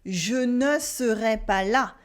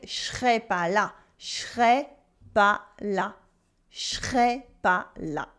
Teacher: the negation in ne pas, where it loses the ne